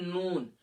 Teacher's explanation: نون کو ادا کرتے وقت آواز جو ہے خیشوم یعنی ناک کے بانسے میں جاتی ہے۔ نون کو ادا کرتے وقت آواز خیشوم یعنی ناک کے بانسے میں۔ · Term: طرف لسان